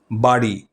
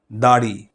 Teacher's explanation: ড বিন্দু র এটার উচ্চারণটা অনেকটা ড আর র এর মাঝামাঝি